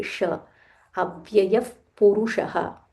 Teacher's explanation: This is Murdanya Sha. So roll your tongue and say Sha.